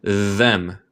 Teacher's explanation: la otra forma de TH suena más como D